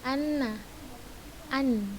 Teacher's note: Yang kedua, bacalah anna atau an. Maka kita akan dapati suara nun keluar dari ujung lidah menempel pada bagian gusi atas.